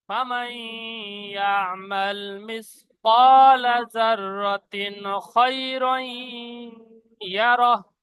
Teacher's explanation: লিয়ুরাউ আমালাহুম ফামান ইয়ামাল মিসকালা যাররাতিন খায়রান ইয়ারাহ। জাররাতিন, জাররাতিন তানবিন এসছে, তারপরে হরফে হালকির ছটা অক্ষরের মধ্যে খ এসে গেছে, ইজহার কায়দা হবে।